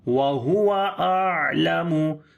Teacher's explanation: On the ain we make tawassut quality again.